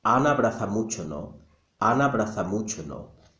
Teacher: even though there is an A sound in Ana and abraza begins with the A sound, we don't say it twice, we only say it once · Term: elision